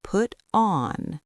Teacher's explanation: The T sounds almost like a soft D because it sits between two vowels.